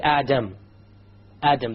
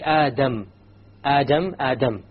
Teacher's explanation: the English D only uses the tip · when you say the Arabic dial you use the tip along with the upper portion